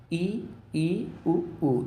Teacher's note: इनके उच्चारण में बहुत कम मात्रा में मुख खोला जाता है इसलिए इनको संवृत स्वर बोलते हैं संवृत माने संकुचित वृत्त यानी कि छोटे आकार में जो खुलता